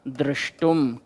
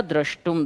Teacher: तुमुन का तुम शेष रहता है, और तालव्य शा के आगे जब ता होता है तो तालव्य शा मूर्धन्य शा में बदलता है, और मूर्धन्य शा का जब ता से योग होता है तो ता बदलता है टा में।